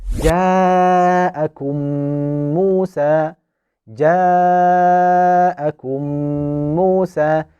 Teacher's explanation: we will insert the meme sakina into a voweled meme and make the nasalization for two counts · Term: small merging